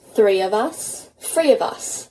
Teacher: The TH or th sound at the start of words turn into a f or F sound.